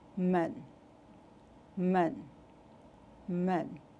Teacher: It has a nasal quality to the sound. The tone is neutral.